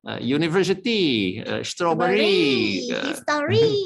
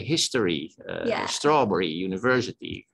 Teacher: I think that the Thai like to put the emphasis on the last syllable.